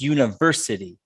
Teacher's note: can you get the third syllable on university for me that's where the stress is